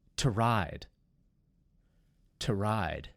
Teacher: how we shorten the o sound in two